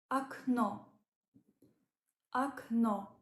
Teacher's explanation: the O at the end is stressed and it gives clear sound o · the first o is unstressed and it's pronounced more like a the O at the end is stressed and it gives clear